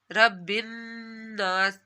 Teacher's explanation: نون کے اوپر آپ لوگوں نے غنہ کرنا ہے، ناک میں آواز لے کر جانی ہے